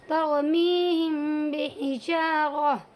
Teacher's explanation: ठीक है, यहाँ पर भी मीम साकिन के बाद बा आया हुआ है, इसीलिए इसमें इदगाम शफवी हो इख़फ़ाए शफवी होगा। इसमें मीम की आवाज़ को नाक में ले जा कर के इख़फ़ा करेंगे · इस मीम की आवाज़ को नाक में ले जाएंगे और इख़फ़ा करेंगे, तरमीहिम बिहिजारा, तो यानी मीम की आवाज़ कम और बा की आवाज़ ज़्यादा आएगी